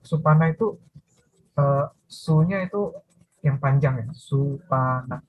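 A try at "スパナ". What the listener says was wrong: Supana. Supana pendek semua, nggak ada yang panjang. Supana. Kalau supana pendek, penci juga pendek.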